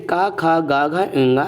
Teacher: क ख ग घ इंग ये आपके कंठ कहलाते हैं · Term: कंठ ध्वनियां